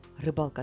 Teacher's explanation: в слові рибалка наголос над буквою а в другому складі посередині слова